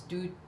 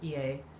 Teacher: to squeak comes out as two low tones